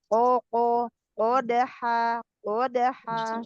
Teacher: kofnya naikkan lagi, Koko, قدحا kodah, suaranya diarahkan ke langit-langit